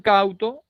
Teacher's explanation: primero será la vocal abierta como en cauto, en la A, y luego la vocal cerrada en la U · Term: diptongo descendente